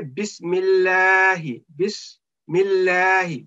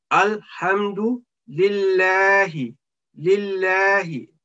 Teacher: We will not make a thick sound here because in this preceding letter, vowel letter is meem with kasra. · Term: thin sound